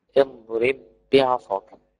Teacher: وفيه يأتي الحرف الأول ساكنا والثاني متحرك، وحكمه الإدغام وجوبا، زي كلمة اضرب بعصاك تقرأ كده اضرب بعصاك، فبدخل الباء في الباء وشدد الباء